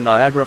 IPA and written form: naɪˈæɡərə (Niagara)